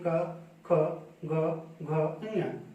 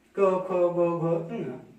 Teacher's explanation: क वर्ग के जितने भी व्यंजन हैं सबके लिए आपकी जीभ एक ही जगह पे स्पर्श कर रही है, कंठ के पास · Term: स्पर्श व्यंजन